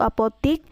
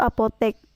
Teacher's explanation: fonem E diucapkan menjadi fonem I